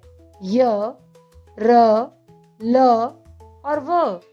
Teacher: जिन व्यंजनों का उच्चारण स्वर और व्यंजनों के मध्य होता है उन्हें अंतस्थ व्यंजन कहा जाता है। ऐसे व्यंजनों के उच्चारण में जीभ मुख से किसी भी भाग को पूर्णतः स्पर्श नहीं कर पाती है